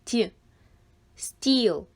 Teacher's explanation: стіл в цьому слові є М'який приголосний ть стіл